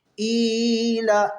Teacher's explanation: حمزہ حلق کے سب سے نیچے والے حصے جو سینے کا جانب ہے وہاں سے حمزہ ادا ہوتا ہے